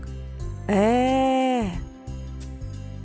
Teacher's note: вимові звуку е губи розягнуті в сторони і прилягають до зубів зуби розімкнуті кінчик язика опущений і не прилягає до нижніх зубів додаємо голос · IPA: [Е]